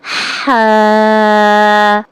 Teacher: کیا آپ کے حلق کے اندر سے آواز نکل رہی ہے؟ درمیانی حلق سے ہوا کے ساتھ آواز کے ساتھ